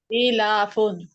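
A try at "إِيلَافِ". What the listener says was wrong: हमजा कहाँ चला गया है? हमजा आप लोग क्यों खाते जा रहे हो बार बार? या क्यों लेके आ रहे हो? हमजा है यहाँ पे लिखा हुआ। इहलाफुन,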